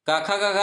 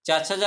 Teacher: काखा का रहेगा तो कंठ, चाचा जा रहेगा तो तालु